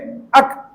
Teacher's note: چھوٹا کاف کہاں سے نکلے گا؟ زبان کی جڑ تالو کے سخت حصے سے